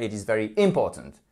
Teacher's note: vous avez mis l'accentuation sur la première syllabe